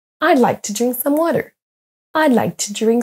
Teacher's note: les petits mots comme le apostrophe D, le to et some vont être à peine prononcés et vont être moins entendus que les autres mots.